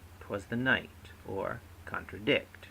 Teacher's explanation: two slack followed by one stressed